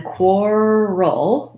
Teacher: you need a dark l at the end